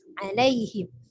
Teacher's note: Berbeda dengan huruf alif yang keluar dari tenggorokan bawah, huruf ain adalah dari tenggorokan bagian tengah ya, tapi jangan terlalu naik ketika sampai ke hidung ataupun terlalu turun ketika kita ambil dari dada dari dada ya, tapi dari tenggorokan bagian tengah.